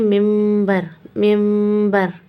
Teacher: نون ادا نہیں ہوتا، نون ہو جاتا ہے ختم۔ نون کسے بدل جاتا ہے؟ میم میں۔